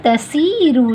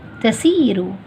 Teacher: صاد اگر اس کو آپ نے ہیوی نہیں پڑھا، مفخم نہیں پڑھا تو وہ تسیرو جیسے سنائی دے گا